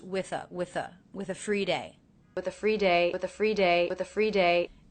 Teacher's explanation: Now I pronounce the ending th unvoiced, with a. Sometimes when people link the ending th that is unvoiced into a voiced sound, like the vowel schwa, they will voice it and say with a.